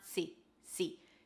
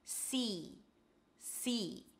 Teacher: It's an S sound and high E. Make sure it's long, so it's not see, see.